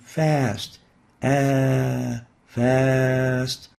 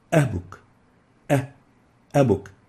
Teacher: In the first a, in the alif, it's extendable, fast. In the second a, in hamza, it's not extendable,